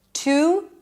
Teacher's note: instead of saying the full oo sound, I'm just pronouncing it again with a schwa